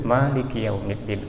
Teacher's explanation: Ma-nya dibaca panjang, beda dengan kita baca surat An-Nas, Malikin Nas ya.